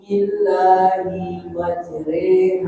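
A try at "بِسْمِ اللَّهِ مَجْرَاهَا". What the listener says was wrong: Bismillahi-nya jangan terlalu panjang.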